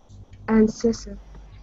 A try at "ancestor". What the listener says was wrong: That's good.